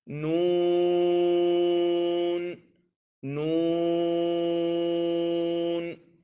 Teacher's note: یہ مد لازم ہوتا ہے تو اس کو 3 الف کے برابر لمبا کرتے ہیں